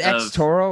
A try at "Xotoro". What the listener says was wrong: No, it's just, it's X-O. It's X-O-T-O-R-O, but it's, I pronounce it Zotoro.